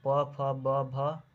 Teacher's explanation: प फ ब भ और उ बोला जाता है ओष्ठ से, क्योंकि यह बोलने से ओठ सट रहा है।